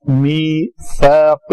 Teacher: تو اس کو ہم نے اصل میں کلمہ ہے من بعد، تو یہ بن جائے گا من بعدی، من بعد میثاقہ. میثاقہ، یہ سا کے لیے پھر زبان جو ہے ثنایا اولیا کے پاس آئے گی. میثاقہ اگر اندر رہے گی تو وہ سین بن جائے گا.